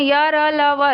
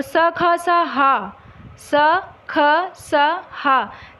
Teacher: अब य, ला, वा को अगर हम बोल कर भी देख सकते हैं, य, ला, वा जल्दी से और कम श्वास में ही बोल जाते हैं। और स, ख, स, हा, स, ख, स, हा बोलने में थोड़ा सा टाइम लग रहा है ना, इसलिए इसे महाप्राण कहते हैं।